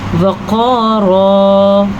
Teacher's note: موٹا قاف کیونکہ حروف مستعلیہ میں سے ہے